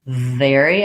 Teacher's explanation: versus very i'm gonna have lip and teeth contact for that v